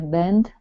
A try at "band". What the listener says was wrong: Now this word here is going to be band instead of bend. Okay, it's band. Band. Okay, so we're looking at the difference. We're looking at the difference between bend, okay, and band. Okay, if you say bend, okay, that's like curving something. Okay, band, where your mouth is wide, band, okay, is different.